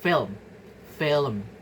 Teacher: a vowel is inserted to separate the liquid and the nasal m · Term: vowel appenthesis